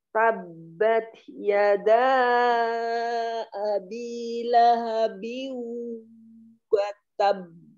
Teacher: Tahan wawunya ditambahkan karena idgham bighunnah ya. Sambil masukkan logah hidung.